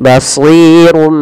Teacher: Awalnya basirun bima, karena ketika adanya tanwin bertemu dengan huruf ba, maka tanwinnya dirubah suara nunnya. Awalnya kan basirun dengan nun sukun bunyinya. Nah, sekarang diganti dengan huruf mim. Jadi basirum sambil ditahan. · Dibaca dengan idbaq yang merapatkan bibir kita. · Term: iklab